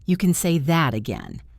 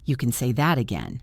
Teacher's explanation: You usually put stress on the word that.